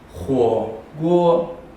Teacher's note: 第1个声调是第3声火，第2个声调是1声锅